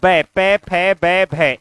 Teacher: ये प वर्ग का उच्चारण स्थान क्या होता है, ओष्ठ होता है। तो ब, प, फ, ब, भ इनका उच्चारण स्थान क्या हो गया, ओष्ठ हो गया।